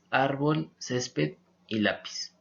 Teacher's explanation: Paso con las palabras graves y estas son las que tienen su sílaba tónica en la penúltima sílaba y se acentuarán siempre y cuando la palabra no termine, en contrario a las palabras agudas, no terminen en N, S o vocal.